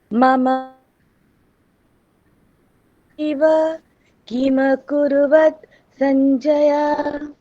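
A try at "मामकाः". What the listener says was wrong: ওখানে দেখুন মামকা, ওখানে ময়ে আকার আছে প্রথমে, তো সেটা দীর্ঘ, সেই কারণে মামকা এরকম বলতে হবে। মামকা এটা বললে হবে না, মামকা।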